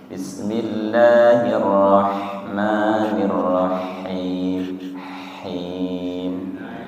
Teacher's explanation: Ha tidak nirrahim tapi nir ha tenggorokan tengah nggih.